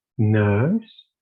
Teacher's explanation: the nurse vowel as you can see uh it is between the vowels schwa and palm